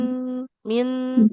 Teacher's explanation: Jadi nun sukun itu dia tawasud, ada aliran suaranya pertengahan ya